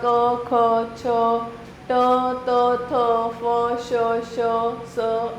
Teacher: इन व्यंजनों के उच्चारण में स्वर तंत्रियों में कोई कंपन उत्पन्न नहीं होता। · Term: अघोष व्यंजन